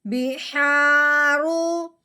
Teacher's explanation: اب اس الف میں مد کا قاعدہ جاری ہوگا، یعنی کہ الف سے پہلے جب زبر آ جائے تو اسے ایک الف کے برابر لمبا کیا جاتا ہے۔ ہاں جی، رو کے اوپر پیش آنے کی وجہ سے رو کو پر پڑھیں گے